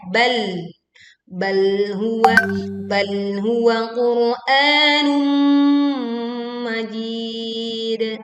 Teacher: tekan lam sukun bal dengan ujung lidah ya